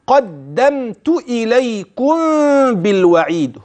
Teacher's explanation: هنا محل الغنه فتنبه وقلقل الدال